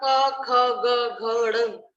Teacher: ये हमारे कंठ से निकलती है, इसलिए इनको कंठ्य ध्वनि कहा जाता है